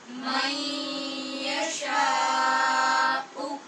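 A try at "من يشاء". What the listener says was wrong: نون ساکن کے بعد یا حروف یرمالون میں سے ہے، ادغام غنے کے ساتھ ہو رہا ہے، شین کے اوپر مد ہے اور حمزہ کو تحقیق سے پڑھیں گے، شاؤ نہیں کہنا، شاؤ شاء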